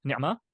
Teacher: One is a standard T, it's a ta over here, and the other one is a ta marbuta, right? So it'll be in a pausal form, it'll be pronounced as a H